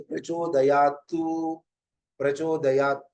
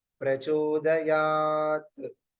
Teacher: ये हलंत है इसके अंत में उकार जोड़ नहीं